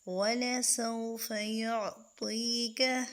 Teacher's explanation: یہاں یالین نہیں ہے، یہ مدہ ہے، اس کو ایک الف کے مقدار پر کھینچیں گے